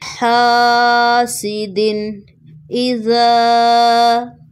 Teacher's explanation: دن تنوین ہے لیکن یہاں پر غنہ نہیں ہوگا کیونکہ نیکسٹ حمزہ ہلکی لیٹر ہے۔ حاسدن اذا، لاسٹ میں دال ساکن ہوگا اور یہاں پر قلقلہ ہوگا۔